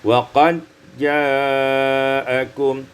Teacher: Pada ayat yang ke-28 wa qad ja'akum idghamud dal fil jim diidghamkan dal pada jim menjadi wa qad ja'akum.